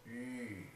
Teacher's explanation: we just make an I-U sound together and round our lips. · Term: yu sound